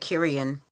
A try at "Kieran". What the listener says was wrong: Yeah, well, you're adding an extra I in there.